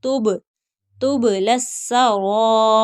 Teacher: با حروف قلقلہ ہے تو اس کی دوبارہ آواز آئے گی